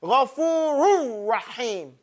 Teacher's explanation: what makes these expressions unique is that this ha has to come with some strength. So if you use all your energy in saying Ghafurur, you won't say him properly.